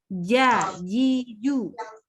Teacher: nggak boleh sampai kedengeran kayak huruf C, ya. C itu keluar udara soalnya. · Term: huruf J